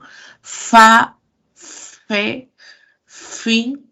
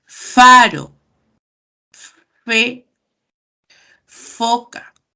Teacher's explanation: Mi labio inferior choca con los dientes. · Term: labiodental